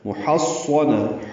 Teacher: محصنہ حا وسط حلق سے ادا کریں گے اور صاد سے ملائیں گے